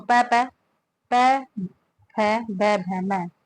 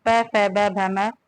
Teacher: पै बै भै वर्ग में ओष्ठ वर्ण है। दोनों ओष्ठों की सहायता से उच्चारित होने के कारण पै वर्ग के वर्ण ओष्ठ कहलाते हैं।